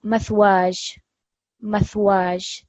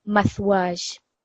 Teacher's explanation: you are going to prolong the alif a little bit, and the ya, you're going to hear a slight sound of the ya coming through.